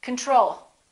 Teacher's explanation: second syllable is stressed the first o is reduced